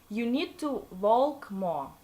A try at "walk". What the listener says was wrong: Walk, not vault. It sounds like vault, like Sounds like a vault.